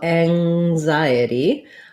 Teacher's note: the letter n says the ng sound so thinking about like words like hang or rang you'll hear that at the beginning of anxiety